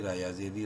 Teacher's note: لیکن زیر کی وجہ سے را کو باریک پڑھنا ہے